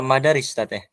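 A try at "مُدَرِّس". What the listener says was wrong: Jadi tulisan mudarris ini ya ikhwah, nih. Mudarris seperti ini juga bisa dibaca dengan madaris tapi ada alifnya. Nah, seperti ini.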